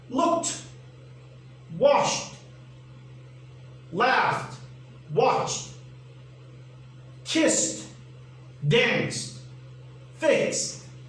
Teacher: the t sound is voiceless